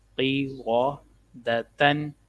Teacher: را پہ زبر اس کو موٹا پڑھیں گے، قاف کو بھی موٹا پڑھیں گے